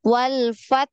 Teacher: Ada hembusan nafas ya untuk ha sukun